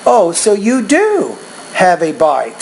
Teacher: you're putting emphasis on do here showing what's called emphatic expressions of surprise